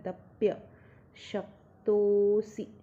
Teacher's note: त के बाद अवग्रह, तो त को लंबा स्ट्रेच करना है और स में जो छोटी की मात्रा को ह्रस्व बोलते हैं और बड़ी की मात्रा को दीर्घ बोलते हैं।